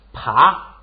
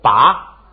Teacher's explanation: 你看它就变送气变不送气了，爬是送气，拔不送气